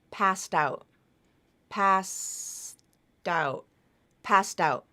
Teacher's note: That final T consonant sound has moved over to the beginning of the next word.